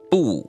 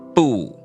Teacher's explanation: that fourth tone needs to start a little bit higher